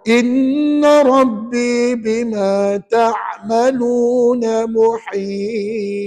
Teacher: Dengar tak di hujung ayat tadi ada qalqalah. Pada huruf ta.